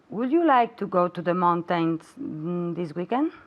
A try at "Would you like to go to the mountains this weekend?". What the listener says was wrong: Mountains. Okay, even though it has the I and the A, we don't say ain, we say in mountain.